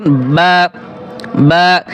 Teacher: দুই ঠোটের ভেজা জায়গা হতে একটি হরফ উচ্চারিত হয়